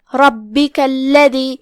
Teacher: کلمت الذی میں یہاں لام پہ تشدید ہے، لہذا ہم دو حرف کی مقدار میں تشدید کو پڑھیں گے. پھر حرف الدال کی ادائیگی زبان کے سر اور اوپر والے دانتوں کے اندرونی کناروں سے کریں گے